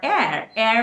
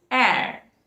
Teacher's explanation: because h is not pronounced it is not hair it is air